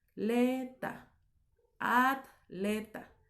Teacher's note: en España y en otros países de América se pronuncian en distintas sílabas